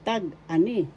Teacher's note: First syllable tag, second syllable ani. The accent is in ani, second syllable.